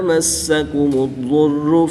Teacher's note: دال جب مشدد ہوگا تو اس پہ قلقلہ کبریٰ کر کے پڑھیں گے، اور ضاد مشدد پر قلقلہ نہیں کریں گے بلکہ اس کو پر یعنی موٹا پڑھیں گے